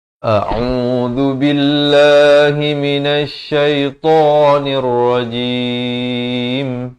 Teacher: A'udzu billah, dengan au. Hamzah di pangkal kerongkong, ain di pertengahan kerongkong, 2 harakat baris dhammah.